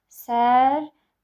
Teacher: Sərbəstlik formasında tələffüz ediləcək. Yəni burada sözün kökündə olan T düşür, L D kimi tələffüz edilir, Ç isə xışdırıq kimi tələffüz ediləcək.